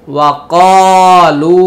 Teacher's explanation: এই খালি আলিফটি পড়তে হবে না, উচ্চারণে আসবে না